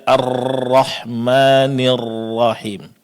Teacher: mendengarkan huruf ra dibaca dengan getaran yang sangat jelas